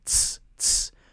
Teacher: Now notice that this one doesn't have our voice at the end. We're not saying Z, we're just saying S, S, with a T sound in front of it.